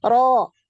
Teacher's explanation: Ro. Pangkal lidah seperti ketika kita mengucapkan huruf qaf, yaitu naik ya, lidah belakangnya. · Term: Tebal